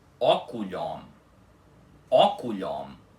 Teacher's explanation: A pronúncia correta dessa palavra é oculion, com o O-M final puxado, ok? O M não faz nasalização nenhuma com o O.